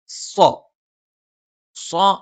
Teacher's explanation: സ്വ എന്നുള്ള ഉച്ചാരണം നാവിന്റെ ഊർത്ത അറ്റത്തിന് മുകൾഭാഗം രണ്ടു വരി മുൻപല്ലുകൾക്കിടയിൽ പിന്നിലായിട്ടും നാവിന്റെ ആ ഒരു മുകൾഭാഗം മുകളിലേക്ക് ഉയരും പക്ഷേ ജ എന്നൊക്കെ ഉച്ചരിക്കുന്നത് പോലെ മുകളിൽ സ്പർശിക്കില്ല അതിന്റെ തൊട്ടു താഴെ സ്ഥാനത്ത് നിൽക്കും അങ്ങനെയാണ് നമ്മൾ എന്ത് ചെയ്യുന്നത് സ്വ എന്നുള്ള